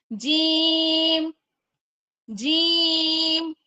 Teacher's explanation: जब इसकी अदायगी करेंगे तो जुबान का बीच वाला हिस्सा तालू से लगेगा। · اپنی شجر اللسان کو تالو سے لگائیں گے، جب اس کی ادائیگی کریں گے تو زبان کا بیچ والا حصہ تالو سے لگے گا